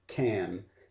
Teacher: the k sound stops the airflow towards the back of your mouth, almost to the throat, can. The p, t, and k sounds are all consonants that stop airflow completely.